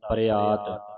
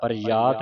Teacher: ਯ ਦੀ ਆਵਾਜ਼ ਨਹੀਂ ਕੱਢਣੀ